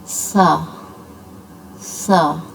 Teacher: सीटी की आवाज़ और साथ इसको पुर करके पढ़ना सा सा। और जब हमने इसकी आवाज़ को खींचना है सा।